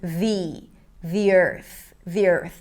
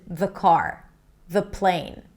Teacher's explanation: That's because there is a vowel right after. When there is a vowel, we want to say the word the with an E sound so it's easier to connect. The earth, the earth.